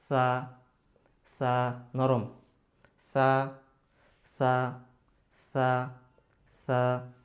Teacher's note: নরম হবে নরম সা জিহ্বার আগা দাঁতের আগাছা